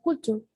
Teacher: en la palabra culture la primera sílaba es la más prominente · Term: prominencia